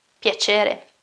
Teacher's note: And also in this case, piacere, you don't have piacere, but piacere, so not a k sound, but a ch sound, because you have a e